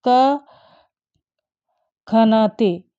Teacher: क और ख के पूर्व आधे विसर्ग सदृश ध्वनि को जिह्वामूली कहते हैं।